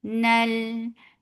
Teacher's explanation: now noon is not anymore long because we are attaching with the second letter next. Nal, 2 counts long.